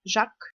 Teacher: j, is voiced, which means your neck is going to vibrate if you put your fingers to it. In both of them, the tongue is raised, its sides touch the alveolar ridge and hard palate at the same time, but air escapes in between and creates friction.